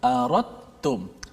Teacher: Kalau dalam ilmu tajwid dipanggil idgham mutajanisain. Sebab huruf da dengan ta ni sama jenis, iaitu hujung lidah berada di pangkal gigi atas